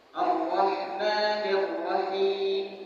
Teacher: Untuk menebalkan roh itu dengan mengangkat pangkal lidah. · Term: tebal